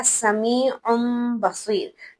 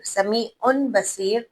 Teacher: उस नून साकिन या तनवीन की जो आवाज है उसको हम मीम से बदल देंगे, जिसे हमने कल्ब का नाम दिया, यानी बदलना।